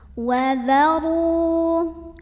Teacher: Ro-nya dibunyikan secara tafkhim karena ro-nya baris dhammah, maka bacanya ditebalkan, pangkal lidah kita dinaikkan.